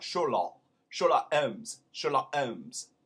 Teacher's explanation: the ck at the end of sherlock is not even said